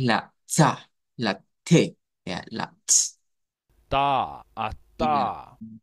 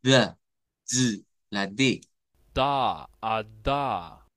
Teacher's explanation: oclusiva alveolar sorda oclusiva alveolar Sonora